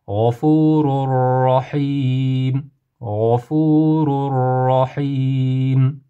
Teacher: Tanvinni nunni g'unnasidom harfidan roga kirgizib, g'unnasiz qilib o'qiymiz.